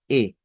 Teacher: lo ubicamos nosotros acá se encuentra en este en esta posición es una posición frontal significa que es como llevando nuestra lengua hacia los dientes superiores por así decir pero si a esta e yo le pongo